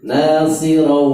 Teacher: Kemudian ro tanwin ketemu dengan wawu, itu idgham bi gunnah sehingga masuk ke rongga hidung ya, istilah masuk ke rongga hidung namanya khaisum, masuk bintang.